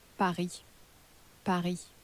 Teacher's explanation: it's spelt exactly the same way in French as it is in English, except that S in the French at the end of the word isn't pronounced